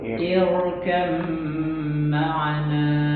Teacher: huruf ro-nya dibaca tafkhim